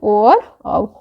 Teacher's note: कंठोष्ठ स्वर के अंतर्गत आते हैं ओ और औ